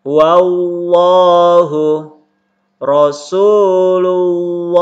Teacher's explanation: sebelumnya berharakat hayang berbaris atas atau berharokat dhommah semuanya berbaris atas ketemu dengan lafdzul jalalah yaitu lafaz Allah maka dibaca tebal dibaca tebal